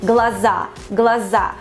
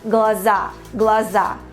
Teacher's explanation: We put the stress on the last syllable